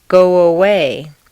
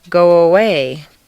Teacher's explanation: For example, if a word ends in O, your lips are going to be in the forward position, so a W, a W, quite naturally leads into the next sound, go away. You don't want to say go away and break the undercurrent of your voice.